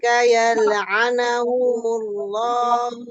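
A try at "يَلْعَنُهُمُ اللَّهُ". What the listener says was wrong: Baik, di sini yal'anuhumullah ya. huruf nunnya dhammah, ya bukan fathah.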